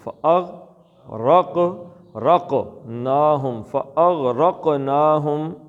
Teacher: قاف کا قلقلہ کرنا، غین کا نہیں کرنا